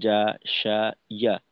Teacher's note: জিহ্বার মধ্যখান তার বরাবর উপরের তালুর সঙ্গে লাগাইয়া উচ্চারিত হয় জিম, শিন এবং ইয়া এর উচ্চারণ